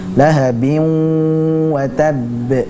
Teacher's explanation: Kemudian pada lahabin wa tabb, lahabin itu adalah hukum idgham bi gunnah, dibaca dengan meleburkan bin wa tabb